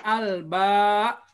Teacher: maka ketika dibaca al-ba, nah tegas, ada syiddah